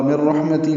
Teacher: مر رحمتی میں نون ساکن کی بعد را آنے کی وجہ سے ادغام کامل ہے، مر میم کو را سے ملا دیں گے، را پر پڑھیں گے، ہا ساکن پہ ہمزہ ہوگا، تا باریک ہے جلدی ادا کریں گے، ہی کھڑی زیر مد صلہ ہے، 2 حرکات لمبا کریں گے۔